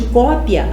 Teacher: Eu tenho primeiro o som da semivogal e depois o som da vogal. É um som crescente. Então, aqui em cópia, eu tenho um ditongo crescente.